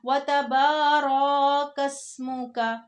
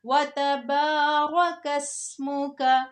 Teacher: را کو بالکل بھی لمبا نہیں ہونے دینا کیونکہ زبر زیر پیش کو لمبا نہیں ہونے دیتے